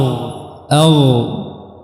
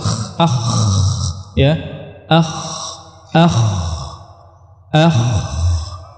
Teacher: Adapun kha dia punya sifat hams.